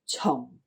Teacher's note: this is a fourth low falling tone right so you've got right now this Tong is your fourth